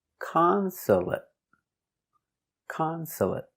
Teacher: 3 syllables. The stress is on the first syllable.